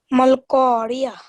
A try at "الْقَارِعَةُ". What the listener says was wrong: Beautiful.